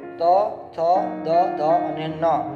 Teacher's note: દંતીય, એટલે દાંતની મદદથી બોલવામાં આવતા વ્યંજન.